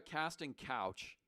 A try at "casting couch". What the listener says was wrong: A casting couch. Casting couch, not coach. A casting coach.